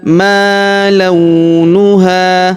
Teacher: Huruf ha kita panjangkan dua harakat ya karena alif di depannya. Dan kita berhenti di sini karena ini tanda berhenti ya.